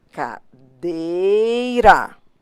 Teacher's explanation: A sílaba tônica é o DEI.